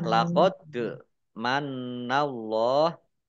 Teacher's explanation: dal sukun, bacaan qalqalah, dibaca memantul, ditampakkan pantulannya